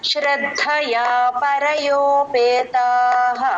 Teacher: ఆ విసర్గ పూర్తిగా హ చెప్పాలి